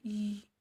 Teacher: इसका उच्चारण जीभिया को कठोर तालू से छूने पर होता है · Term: तालव्य